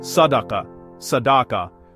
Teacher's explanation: The S is heavy, full, and round. The whole word feels more important because of that one heavy letter. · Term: heavy S